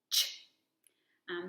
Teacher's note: So this sound, you want your lips to be rounded and your tongue right behind your teeth, and your voice is off for the sound, so no voicing, but the sound is very short. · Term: ch sound